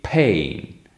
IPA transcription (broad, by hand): pheĭn